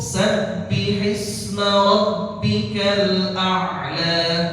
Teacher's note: A'la lahnya pendek, jangan lebih dari 2 harakat.